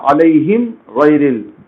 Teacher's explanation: با میم کے علاوہ کوئی بھی دوسرا حرف رہے میم ساکن کے بعد تو وہاں غنہ نہیں کریں گے، اس کو کہیں گے ہم اظہار شفوی، یعنی میم کو ظاہر کر کے پڑھیں گے آپ، میم کے پاس غنہ نہیں کریں گے